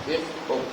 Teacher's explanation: لہات یعنی کوے کے متصل زبان کی جڑ جب اوپر کے تالو کے ساتھ ٹکر کا ہے، اس سے قاف ادا ہوتا ہے